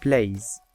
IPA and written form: pleɪz (plays)